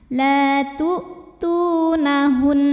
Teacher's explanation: Ini berhenti ataupun tidak tetap ada hukum gunnahnya, gunnah musyaddadah karena nun bertasydid. Cara bacanya dengung, jadi masih ada bunyi n tahan.